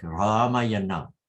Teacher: But here, this is a frozen compound. Retroflexion has crossed the pada boundary.